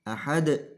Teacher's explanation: Di sana ada hukum qalqalah. Qalqalah artinya pantulan. Sehingga ketika mengucapkan lafadz ahad harus dipantulkan atau harus dikolkolahkan.